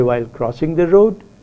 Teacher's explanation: When you have a long utterance and you have to break it into different tone groups, you often say the incomplete part of the sentence with a rising tone